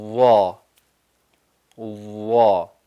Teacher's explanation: وا جو ہے وہ بولڈ ہو جاتا ہے اور جوف دہن میں آواز بھر جاتی ہے